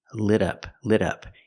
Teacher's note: We hear the T in lit as a fast D.